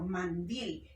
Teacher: llevan el acento en la última sílaba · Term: palabras agudas